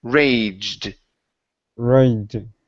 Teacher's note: So this is going to be a J sound into a D.